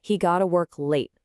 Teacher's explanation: Got to becomes gota and we stress the important part. He got to work late, faster, smoother, and everyone understands you perfectly.